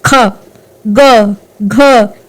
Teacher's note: इन सब का उच्चारण हमारे कंठ से होता है, इसलिए इनको कंठ्या वर्ण बोलते हैं।